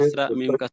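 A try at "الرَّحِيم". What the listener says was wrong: হ্যাঁ, হ্যাঁ হ্যাঁ ভাই, কেন একটা বলতে ফাতা বলতে কাসরা বলেন, কাসরা বলতে ফাতা, লেশ কি দেখা যায়, ধীরে ধীরে বলতে বললাম না।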